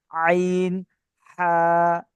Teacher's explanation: আইন আ এর মাখরাজ হালাকের বা কন্ঠনালীর মাঝখান হতে উচ্চারণিত হয়। · হালাকের বা কণ্ঠনালীর মাঝখান হতে উচ্চারিত হয়। কণ্ঠনালী মানে গলা, গলার মাঝখান থেকে উচ্চারিত হয়।